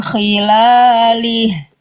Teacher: Dia nggak sampai terlalu ngorok gitu ya. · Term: huruf kho